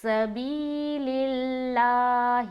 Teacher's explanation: زیر کی حرکت ہے۔ تو جب بھی لفظ اللہ آئے اور اس سے پہلے والے حرف کے نیچے زیر ہو تو لفظ اللہ کا جو لام ہے اس کو ہم باریک پڑھیں گے، جیسے کہ سبیل اللہ، لیکن اگر اسلام کے اوپر زبر یا پیش ہوتا تو ہم اس لفظ اللہ کا لام کو موٹا کر کے پڑھتے.